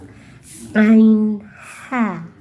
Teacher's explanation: Tengahgorokan yang disebut dengan wastul halqi yaitu hurufnya adalah ain ha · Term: tengah tenggorokan